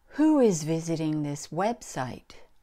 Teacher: you can hear that who is a higher pitch than the rest of the sentence that's because it's the information we're looking for it's important the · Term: intonation, intonation pattern